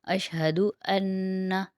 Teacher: نون مشدد آ رہا ہے نا پہ، تو نون مشدد میں 1 الف کی مقدار غنہ کریں گے